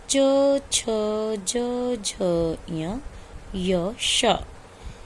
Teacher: इन सब वर्णों का उच्चारण स्थान है तालु। इसलिए इन वर्णों का नाम दिया गया तालव्य।